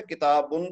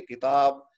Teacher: یہ عام طور پہ جب بھی آپ کوئی اسم دیکھیں گے تو زیادہ تر اسماء کا جو آخری حرف ہوتا ہے نا اس پہ تنوین ہوتی ہے 2 پیش، لیکن جب ہم اس کو بولتے ہیں بغیر کسی اور لفظ سے ملائے تو ہم آخری حرف کو ساکن کر دیتے ہیں، تو ہم اس کو اس کی تنوین گرا دیتے ہیں۔